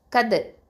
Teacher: கல்கலா பண்ணணும், கல்கலா சுக்ரா, லைட்டாக கல்கலா பண்ணணும்